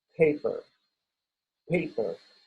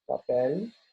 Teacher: hay como un soplo de aire que acompaña la P en la primera P, paper